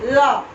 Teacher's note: ल जब बोलते हैं तो दांत और ओष्ठ दोनों की जरूरत पड़ती है। ल ओष्ठ का भी आकार गोल हुआ और दांत में हमारा जो जीभ है वो टच खाता है, इसलिए दंतोष्ठ हो गया ल।